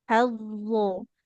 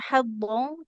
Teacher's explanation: lidahnya. Ujung lidahnya ke ujung gigi seri yang atas.